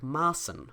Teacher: We spell it like this. So we have a single letter, meaning a long ah sound here, and a definite unvoiced s sound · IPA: /ˈmaːsn̩/